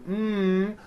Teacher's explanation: off your nose m you see you cannot do it because the M sound comes out of your nose it's a nasal sound same thing with the NG sound in comes out of your